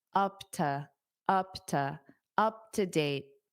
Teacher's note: this to will become unstressed because it's a preposition